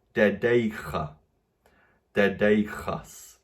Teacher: we also have a slight change of consonant. We move to using an aspirated consonant. I imagine that's because kappa plus kappa is making chi, and we get dedeicha, dedeichas.